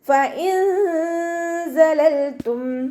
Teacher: ഫ ഉച്ചരിക്കുന്ന സമയത്ത് മേലെ മുൻപല്ലിൻ്റെ അറ്റം താഴെ ചുണ്ടിൻ്റെ ഉൾവശത്ത് നനഞ്ഞ ഭാഗത്ത് വെക്കുക. ലൈറ്റാക്കിയിട്ട് ഉച്ചരിക്കുക കേട്ടോ.